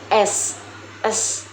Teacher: Yang ke-16 ada huruf S. Huruf S dibentuk dengan menggunakan lidah dan gigi atas, serta menghasilkan suara yang bergesekan atau disebut frikatif alveolar.